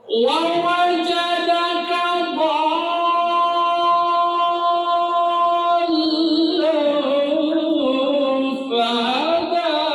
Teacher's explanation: Ikhfa itu karena dia bertemu dengan fa, jangan ditutup bibirnya.